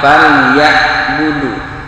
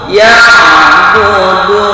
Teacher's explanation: ini huruf ain sukun, maka jangan sama dengan hamzah, jangan falyabudu, itu ya budu bukan ke ain tapi ke hamzah.